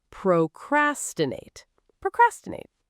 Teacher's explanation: This one trips people up. It's procrastinate, stress on the second syllable, not procrastinate.